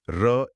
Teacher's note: र एक प्रकंपित या लुंठित व्यंजन है। इसे बोलते वक्त जीभ रोल होती है या कांपती है।